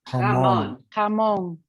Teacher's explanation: you think should be an English H, but it's throaty. So the sound comes more from here. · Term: throaty H